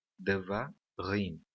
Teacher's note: Existem 3 sílabas nessa palavra e a última sílaba é a sílaba tônica, rim, tá bom?